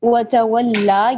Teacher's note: اب کھڑا زبر کا مطلب یہاں پہ یہ ہے کہ ہم یہاں پہ سٹاپ کر رہے ہیں، آیت کا اختتام ہو رہا ہے تو ہم اس کو ایک الف کے برابر لمبا کریں